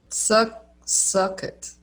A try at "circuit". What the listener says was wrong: Oh, now it sounds like suck it, like with the part at the start. Circuit.